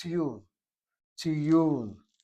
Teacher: You hear people say tiyul, that's emphasizing the first syllable. It's the second syllable that needs to be emphasized.